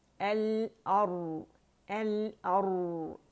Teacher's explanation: रा साकिन से पहले हमारे पास फतहा है तो रा मुखफ़्फ़म यानी कि मोटी पड़ी जाएगी